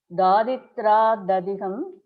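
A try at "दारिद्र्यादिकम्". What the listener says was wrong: Dadigam. What is Dadigam? Dadikam, not Dadigam and all. Dadikam, you have to say Dadikam. It is one word, so you cannot stop somewhere and say Dadikam. There is no Dadikam. Daridrya Dadikam. One word.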